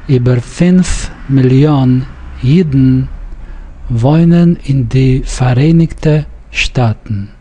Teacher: Now, note we have the word Yidden and Staaten, and they both are syllabic, the dn and n.